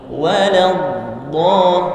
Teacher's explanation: Perhatikan, dha-nya tidak monyong karena fathah. Waladhdall, tidak perlu walad.